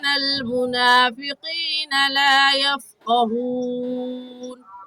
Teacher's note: قاف حروف مستعلیہ میں سے ہے، یعنی اس کو ادا کرتے وقت دونوں ہونٹ گول ہو جائیں گے، اور ایسے ہی یفقہون میں بھی قاف کو پر پڑھیں گے، یعنی ہونٹوں کو گول کر کے پڑھیں گے۔